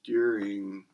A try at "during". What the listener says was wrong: You said during, weird. It sounds like durian. During. I guess it's the same word, pretty much.